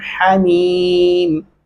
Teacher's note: मोटा हा नहीं पढ़ना